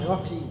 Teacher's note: রাহিম বললে আকার হয়ে যাচ্ছে, আমরা একটু মোটা করে বলবো